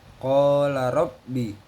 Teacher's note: Lalu pada ayat ke-8, qala rabbi, ini adalah tajwid mad tobi'i sebab huruf alif di fathah dan huruf ro dibaca tafkim sebab berharokat fathah